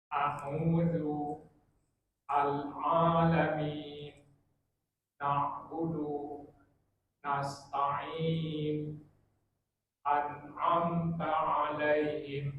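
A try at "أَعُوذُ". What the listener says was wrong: Nah, Masya Allah, mumtaz.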